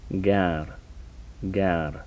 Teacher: These are the velar stops.